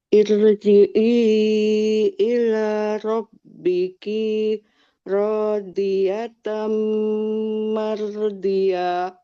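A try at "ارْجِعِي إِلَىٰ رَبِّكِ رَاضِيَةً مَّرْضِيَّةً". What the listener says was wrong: Nah, ini robbikinya kinya pendek. Robbiki rodiyatan mardiyah. D-nya ditekan. Diyah. Rabbiki Radiyatan mardiyah. Tamnya didengungkan dulu. Radiyatan mardiyah. Radiyatan diyah double y diyah.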